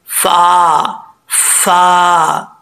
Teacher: फ ऊपर वाले जो दो दांत है ऊपर वाले दांतों का निचला जो किनारा है ये नीचे वाले होठ की तरी वाली जगह प लगेगा तो फा पड़ा जाएगा · اوپر والے دانتوں کا نچلا جو کنارہ ہے، یہ نیچے والے ہونٹ کی تری والی جگہ پہ لگے گا تو فا پڑھا جائے گا ، فا فا، ٹھیک ہے، ہونٹ گول کر کے نہیں پڑھنا۔ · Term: فا کا مخرج